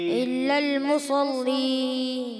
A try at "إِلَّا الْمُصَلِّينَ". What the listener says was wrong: لام موٹا نہیں کرنا. مصلين. مصلين. إلا المصلين.